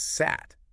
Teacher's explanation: So you have an underlying form like sad, meaning garden, but because of this rule, it gets pronounced as sat with a voiceless T at the end. Ah, okay, so the underlying form has that voice D, but the rule changes it to a voiceless T when it's in that final position.